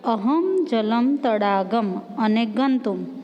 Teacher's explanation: અનુસ્વારનું ઉચ્ચારણ મુખ અને નાકથી મળીને થાય છે સામાન્ય રીતે કહીએ તો આનું ઉચ્ચારણ મ જેવું થાય છે આ